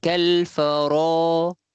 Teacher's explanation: Kemudian ro tu panjang, ada alif, 2 harakat.